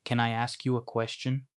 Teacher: асуултанд дууны өнгө өсөж байгааг анзаарна уу?